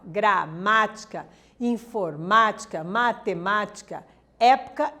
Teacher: ela tem o acento na antepenúltima sílaba tônica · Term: proparoxítona